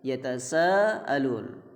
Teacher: Amma yatasaalun, itu ada mad wajib, yatasaalun. Pastikan panjangnya lebih dari 2 harokat, yaitu pastikan 5 harokat, bahkan 6 harokat juga dianjurkan karena ini wajib.